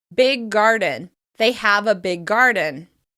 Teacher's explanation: This is called gemination, and as usual, it helps us move through words more quickly. Rather than pronouncing the same sound back to back, we simply extend the sound and flow into the next word. · We extend the g sound and flow into the next word.